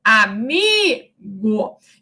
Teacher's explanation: a vogal tônica é o I